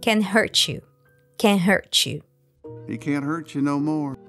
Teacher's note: T from hurt merges with Y from U producing the CH sound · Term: connected speech